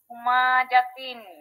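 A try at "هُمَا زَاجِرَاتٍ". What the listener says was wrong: আচ্ছা, এই যে হুমা জাতিন, এখানে কি মিমে টানা যাবে? টানা যাবে না, তাহলে আবার পড়েন। হুমা জাতিন বলেন তো। হ্যাঁ, হুমা জাতিন মনে রাখতে হবে যে টিনে মানে ইসের যেন কখনো টান না হয়ে যায়, এটা একটু মনে রাখতে হবে। হুমা জাতিন।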